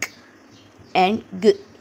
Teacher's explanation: When we make the sound k and g, the tongue is in contact with the lower side of the velum, and we call these velars consonants.